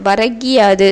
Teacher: முதல் சொல்லின் இறுதியில் உள்ள கூ என்னும் எழுத்து கீ என ஒலிக்கிறது. அதுவும் முழுமையாக ஒரு மாத்திரை அளவில் ஒலிக்காமல் அரை மாத்திரை அளவாகவே குறைந்து ஒலிக்கிறது. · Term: குற்றிய லிகரம்